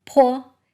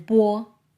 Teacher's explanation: the first sound has a puff of air just like you'd find in English, and the second one doesn't have that same puff of air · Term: aspirated and unaspirated pairs